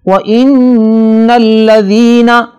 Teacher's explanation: نون پر شد ہے، لہذا اس پہ غنہ ہوگا